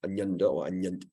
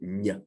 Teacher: your tongue actually touches the bottom teeth, and the middle of your tongue goes up. So nya, like a sort of a dome shape.